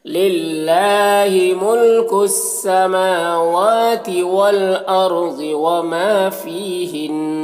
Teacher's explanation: فی میں یا مدہ اسے بھی ایک الف کے برابر کھینچیں گے. ہن نون مشدد ہے تو یہاں پر وقف کریں گے تو غنہ کے ساتھ میں وقف کر دیں گے · والارض را کو پر پڑھیں گے، ضاد کو بھی پر پڑھیں گے